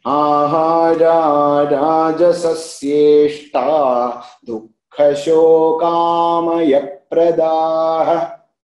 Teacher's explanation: So if you are chanting together, then that visarga will be dropped. If you are splitting, and then that visarga will be there.